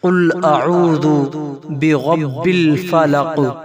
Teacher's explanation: را کے اوپر زبر ہے، را کو پر پڑھا جائے گا۔